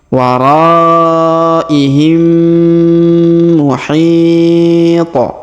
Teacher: huruf mim sukun bertemu dengan mim bertasdid maka mim sukunnya kita leburkan ke huruf mim bertasdid